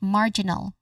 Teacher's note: First syllable is the stress syllable here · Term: stressed syllable